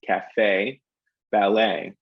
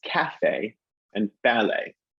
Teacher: in u.s english we hit the second syllable in both of those words